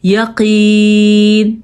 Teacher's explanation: یا مدہ ہے, یعنی کہ یہ کھینچ کے پڑھنے والی یا ہے